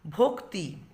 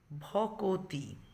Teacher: ক আর তর মাঝে স্বরধ্বনি চলে এসছে। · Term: স্বরভক্তি